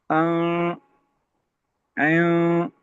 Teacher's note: नून में जब पढ़ते नून पढ़ते हैं तो मखरज को जुबान को लगा देते हैं उन मसूड़ों के साथ, लेकिन गुन्ने में थोड़ा दूर रखेंगे इसको, जुबान को मसूड़ों से, आवाज नाक में चली जाएगी।